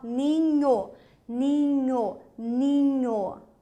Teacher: E algumas transcrições fonéticas admite-se aqui uma certa nasalização